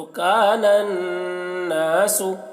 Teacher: اذا الشمس، کان الناس، کاف الف زبر کا، نون نون زبر نن، کانن، نون الف زبر نا، کاننا، سین پیش سو، کان الناس۔ تو یہاں پر نون میں غنہ کر کے پڑھ رہے ہیں کیونکہ نون کے میں تشدید ہے